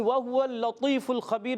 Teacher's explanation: واو ہونٹوں کی گولائی سے ادا ہوتا ہے. واو پر زبر ہے، حرکات کو بغیر کھینچے ادا کریں گے.